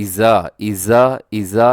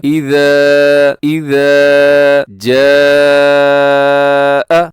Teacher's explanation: اذا اذا اذا یہ درست نہیں ہے، بلکہ نرمی سے پڑھنا ہے. سیٹی بالکل نہیں ہونی چاہیے ذال کی ساؤنڈ میں. اذا لمبا بھی کرنا ہے کیونکہ ساتھ الف ہے.